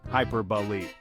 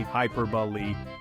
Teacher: The emphasis goes on the second syllable, peer.